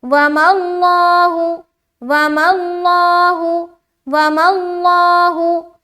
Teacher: یہاں پر بھی لفظ اللہ کا لام ہے. یہاں پر لفظ اللہ کا لام کو موٹا کرنا ہے